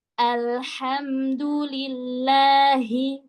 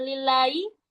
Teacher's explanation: Huruf ha jangan sampai hilang, bukan lillahi.